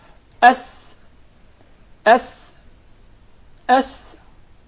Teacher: Did you notice the whistle while pronouncing the letter Sin?